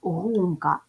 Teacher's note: буде і два склади гумка ділимо на склади ставимо наголос гумка наголос падає на перший склад